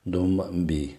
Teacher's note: So that ba after the tanween here, then the iqlab rule comes in, and that's why this dun changes to a meme and becomes dum bi